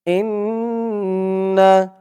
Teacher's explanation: ইন বলে গুন্না করতে হবে ওয়াজিব গুন্না